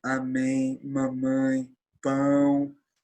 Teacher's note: Quando então eu coloco uma vogal nasal, eu tenho então a presença de energia, a presença de ressonância no nariz